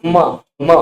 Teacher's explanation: और म जो है ना, इसका उच्चारण स्थान म, म बोलिए तो देखिए दोनों होंठ टच, ठीक। तो इसका उच्चारण स्थान ओष्ठ है, उसके साथ साथ नासिका